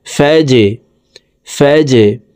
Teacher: ফা জিম জবর ফাজ, জিম কলকলার হরফ, নিচের দিকে ধাবিত করে ধাক্কা দিয়ে উচ্চারণ করব।